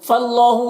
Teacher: یہاں پر اللہ کے لام کو پر پڑھیں گے کیونکہ فا کے اوپر زبر ہے اور الف کو نہیں پڑھنا ہے، کھڑا زبر ہے اللہ کے لام میں تو اسے 1 الف کے برابر کھینچیں گے۔